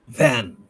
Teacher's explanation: va হচ্ছে লেবিওডেন্টাল, va উপরের teeth নিচের ঠোঁট এবং ভয়েসড